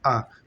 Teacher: मुख द्वार लगभग पूरा खुला रहता है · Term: विवृत